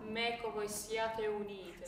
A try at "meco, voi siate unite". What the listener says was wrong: So, in a word like voi, we have to sing, even if it's the stress is on voi, we still have to sing e. I'm missing it. So, voi.